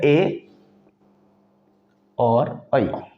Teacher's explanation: ऐसे वर्ण जो कंठ कंठ और तालू दोनों की मदद से बोले जाते हैं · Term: कंठ तालव्य